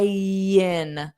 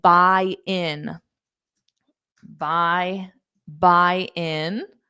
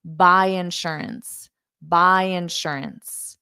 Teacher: by already ends on that Y which we use to connect to the next vowel